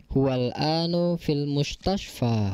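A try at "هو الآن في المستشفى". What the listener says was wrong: Huwal ana, al-an dibacanya fathah. Al-ana artinya sekarang.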